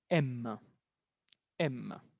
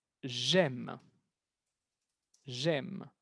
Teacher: si el verbo es aimer, el E al final no lo vamos a pronunciar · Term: l'elision